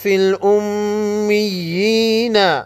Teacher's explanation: میم مشدد پر غنہ ہوگا